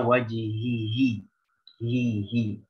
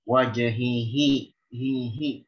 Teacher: ini harus dijaga makhrajnya di aqsal halq, pangkal tenggorokan